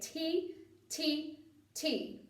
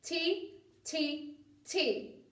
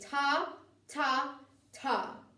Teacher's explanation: the tip of your tongue is hitting the top of your mouth like the roof of your mouth